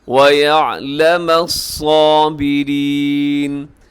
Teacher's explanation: صاد موٹے حروف میں ہے، اسے خوب آپ نے موٹا کر کے پڑھنا ہے۔